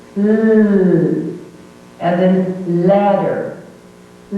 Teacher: You should feel the air coming from either side of the tongue, out of the mouth. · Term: sound L